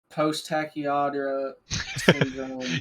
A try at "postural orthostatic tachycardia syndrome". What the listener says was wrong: You just said all three of the words in one word. Postural orthostatic tachycardia syndrome.